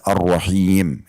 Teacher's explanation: Setelah ha ada ya yang sukun maka dibaca arrahim gitu ya. Jadi ada madnya di situ.